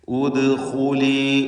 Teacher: ദാലിൻ്റെ സുക്കൂൻ ഖൽഖല സൂറ നൽകി ശബ്ദം ഹറക്കത്ത് പോലെ ചലിപ്പിച്ച് വ്യക്തമാക്കണം.